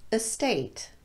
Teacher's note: it's also completely okay to say a state with the schwa vowel